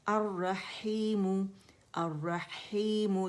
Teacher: खीमु नहीं बोलेंगे, यूजुअली लोग अदनुल हल्क पे चले जाते हैं, खा अदा करते हैं, आपने मिडल थ्रोट पे रहना है